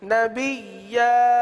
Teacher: نبیا وہ مد عارض والی پوزیشن نہیں ہوگی، یعنی 3 الف تک کھینچ کر پڑھنا، 1 الف تک کھینچیں گے کیونکہ الف سے بدل رہے نا، 1 الف تک کھینچیں گے.